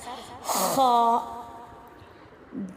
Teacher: خا کا جو مخرج ہے وہ ادنی حلق یعنی کہ حلق کا جو منہ کی طرف والا حصہ ہے، اوپر والا حصہ جہاں سے حلق شروع ہوتا ہے وہاں سے خراش کے ساتھ، ہلکی سی خراش کے ساتھ